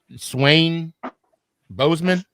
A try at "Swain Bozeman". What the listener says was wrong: Oh, it's Swain, but they pronounce it Swan. Yeah, so Swan Bozeman.